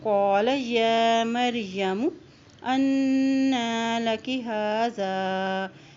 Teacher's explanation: یا کے پر کھڑی زبر ہے، اس کو ایک حرکت لمبا ادا کریں